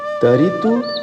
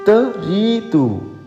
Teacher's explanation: देखिएगा र ईकार के साथ दीर्घ है, थोड़ा सा खींच करके पढ़िएगा